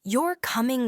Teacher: saying you're coming with a rising tone invites confirmation